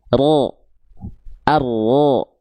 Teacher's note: ro itu dilafalkan dari bagian ujung lidah tapi bukan ujungnya banget, tapi dia dilafalkan dari bagian punggung lidah